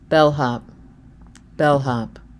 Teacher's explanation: I make sure that I'm not lazy and I devoice that H · But I also don't get an L in bellhop. I get the dark L.